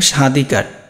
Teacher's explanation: একদম শুরুতে ব ফলা থাকলে সেই বটা কিন্তু আর উচ্চারণ হবে না, সেই ব ফলার কোনো উচ্চারণ হয় না।